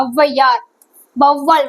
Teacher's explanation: முதலில் வரும்போது என்ன ஆகுது, அதோட மாத்திரை அளவுல இருந்து குறைஞ்சு 1.5 மாத்திரையா ஒலிக்குது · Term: ஔகார குறுக்கம்